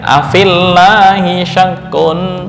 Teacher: Maka ya mad digugurkan ketika dibaca wasal dan hasilnya adalah bacaan fa berharakat kasrah lalu langsung ketemu huruf lam yang bertasydid.